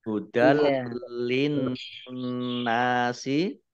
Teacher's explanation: fathah tanwin bertemu dengan huruf lam, bacaan idgham bila gunnah. Atau dengan tidak mendengung. Tandai dengan ada lamnya, ada tasdidnya.